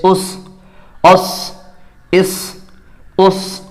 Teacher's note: صاد حروف مستعلیہ کا حرف ہے جو ہمیشہ پر ہوگا